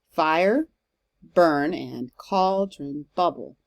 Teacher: And so you see how I'm putting like a little apostrophe or an accent mark after the stressed syllable, and you see how the stressed syllable here in these lines is always the first one in the kind of foot. Yeah, so I think fire is supposed to be a two-syllable word in Shakespeare's time.